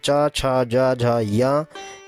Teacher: च वर्ग में च, छ, ज, झ, य, इन वर्णों का उच्चारण स्थान तालु होता है